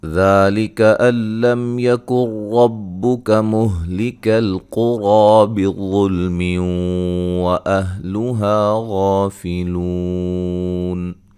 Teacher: جب بلا غنہ کا مطلب غنہ نہیں کرنا، ٹھیک ہے جی۔ را کو موٹا ادا کریں گے، قاف کو موٹا ادا کریں گے، را کو موٹا ادا کریں گے، مد اصلی ہے۔